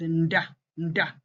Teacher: It occurs mainly in borrowed words when it is alone, the da sound. You most always find it as nda, nda, with a letter, a prenasalized sound in front of the da.